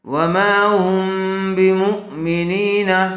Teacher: وما ہم غنے کے ساتھ اخفا ہوگا، اس کو اخفائے شفیع کہتے ہیں